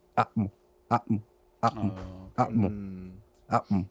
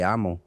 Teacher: So instead of like saying amo, it should have been atmo, atmo, atmo, atmo, atmo. So there's a stoppage in between the A and the M. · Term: glottal stop